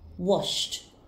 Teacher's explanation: then the e d ending will be pronounced as kissed kissed the verb wash has a sound ending in sh so the e d ending will be pronounced as T